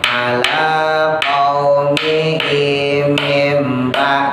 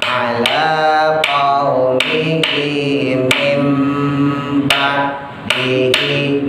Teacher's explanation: cara membacanya ditahan minimal satu alif atau dua harokat